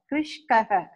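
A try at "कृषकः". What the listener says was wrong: See, you say kru sha That when you say it together, you are making it krishkaha. How that shakara dropped its vowel. It is krishakaha, simple. That Hindi will not apply here. You cannot sacrifice the vowel for the sake of, I mean, like Hindi.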